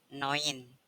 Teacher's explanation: vokal E dan vokal u dibaca oi contohnya pada kata Noin tulisannya neun Tapi bacanya Noin artinya nah